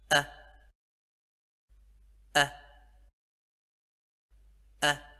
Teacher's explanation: thì lúc này chúng ta sẽ bật hơi rất là nhanh mạnh và dứt khoát · hơi rất là nhanh mạnh và dứt khoát ha ha ha các bạn có thể cảm nhận được là cái âm được bật ra từ trong cổ họng